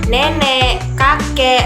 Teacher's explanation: Nah, kemudian naik lagi ke atas, itu ada huruf E. Nah, E itu ada di media bawah depan. Itu posisi mulut itu semi terbuka.